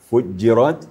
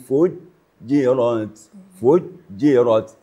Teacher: Syiddah artinya suara tertahan apabila membaca jim apalagi waktu bertasyd fujjirat. Jadi suara kita tidak mengalir.